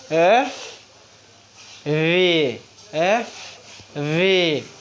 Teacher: দুই ঠোট উপরে দাঁতের সাথে লেগে উচ্চারণ করতে হবে।